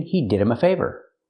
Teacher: the H is silent because it's not a stressed word